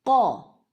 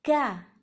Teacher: قوف موٹا حرف ہے، اس میں زبان کی جڑ اوپر تالو کی طرف ہوتی ہے، بلند، آواز کا دباؤ بھی اوپر ہوتا ہے۔ قوف کی آواز آتی ہے قوف زبر قو۔